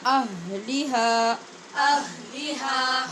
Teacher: ہا کو الف کے ساتھ لمبا کر کے مد کے ساتھ ہی پڑھنا ہے